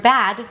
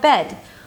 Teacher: you're most likely to substitute it with an e sound if you don't open your mouth enough.